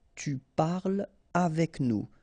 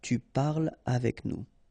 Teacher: So no liaison here between parle and avec